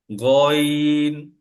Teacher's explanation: খ এর মত কর্কশ সাউন্ড হবে মোটা করে